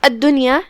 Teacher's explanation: یہاں دال پہ تشدید ہے، 2 حرف کے برابر دال کو پڑھنا ہے اور تشدید کو ظاہر کرنا ہے